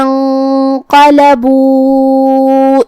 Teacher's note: کلمت انقلبوا میں یہاں بھی حمزۃ وصل کو ہمیں ظاہر نہیں کرنا ہے، یہاں بھی حکم ہے اخفاء، نون ساکن ہے پھر حرف القاف آتا ہے، اور جو کہ حکم میں غنہ رہتا ہے تو ہمیں یہاں غنہ کو تفخیم سے ادا کرنا ہے، کیونکہ قاف حروف التفخیم میں سے ہے، مطلب ہم یہ غنہ کو بھاری آواز میں پڑھیں گے۔